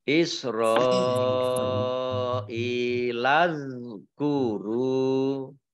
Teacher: dzal sukun, ya ingat, diperhatikan, jangan dimantulkan, karena ini bukan huruf qalqalah.